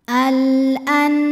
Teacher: nun sukun dibaca jelas, jadi bunyi n, jangan ditahan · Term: idhar halqi